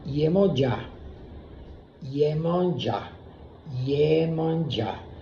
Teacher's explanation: Este sonido es un sonido gutural, abierto, velado, y la O pasa sin ningún tipo de problema a escucharse como una A cerrada. Cerrada, y cuando el portugués cierra la vocal, la manda atrás de la garganta y suena gutural con una elongación hacia una N.